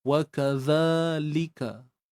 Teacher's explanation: Kita keluarkan sedikit ujung lidah kita bagi memenuhi zat huruf zal tu sendiri, makhraj zal tu.